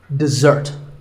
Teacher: Notice that the first syllable is de and the second starts with a z sound. We stress the second syllable